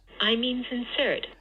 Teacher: an H star on I, another H star on the second syllable of insert, because that's where the stress is.